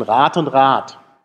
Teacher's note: am Ende eines Wortes kann ich nur stimmlose Explosive benutzen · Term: Auslautverhärtung